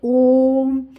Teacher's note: जब इसका उच्चारण करते हैं तो इसमें जो समय है तिगुना लगता है · इसमें आपका कम समय लगता है, इसमें दुगुना लगता है। और प्लुत स्वर में जब बोलते हैं तो दोस्तों इसमें जो है समय तिगुना लगता है।